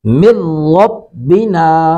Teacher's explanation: لام اور را یہ 2 حروف ادغام ایسے ہیں کہ جن میں ناک میں آواز نہیں جاتی۔ اس کو ہم تجوید و قرات کی زبان میں کہتے ہیں ادغام بلا غنہ، ادغام غنہ کے بغیر، ادغام ناک میں آواز جائے بغیر۔